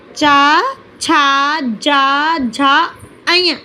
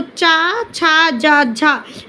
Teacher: इन्हें बोलने में हमारी जिह्वा डायरेक्ट तालव्य से टच होती है, इसलिए हम इनको तालव्य बोल सकते हैं।